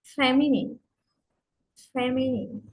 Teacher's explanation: first syllable primary stress feminine third syllable secondary stress